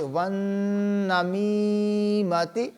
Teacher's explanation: نون مشدد ہے، نون کے اوپر غنہ بھی کریں گے اور میم کے بعد یا مدہ ہے، میم کو کھینچیں گے